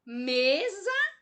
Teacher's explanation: A sílaba tônica, a sílaba mais forte é a me. Recai na penúltima sílaba. Palavra paroxítona.